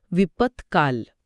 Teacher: द च्या जागी त्याच रांगेतलं त हे कठोर व्यंजन येतं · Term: प्रथम व्यंजन संधी